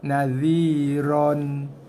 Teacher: Ni ra dibaca dengan ra tafkhim. Ra tebal ron bukan ran.